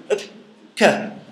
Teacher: You have a blockage of the air, and then you release it, and then you have the production of K. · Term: plosives